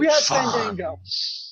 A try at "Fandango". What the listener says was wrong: You got to draw out the A. You got to breathe the A's more. Fandango.